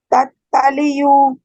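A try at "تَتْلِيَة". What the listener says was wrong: सब त निकला है पढ़ने में। फिर से पढ़ो। पहले वाला एकदम लाइट। एक मिनट, पहले वाला एकदम लाइट पढ़ना है, तुम्हारे मुंह से एयर निकलनी चाहिए, राइट। और फिर दूसरे वाला हैवी हो जाएगा।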